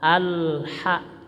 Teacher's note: Alif Lam qamariyah Ya jelas lamnya tidak mantul Jangan dibaca Alha gitunya tapi Al tahan ditahan Alha langsung Ha